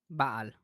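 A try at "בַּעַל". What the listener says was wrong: Baal. No, short vowel, remember? Baal. 2 short vowels. Yeah, no long vowels.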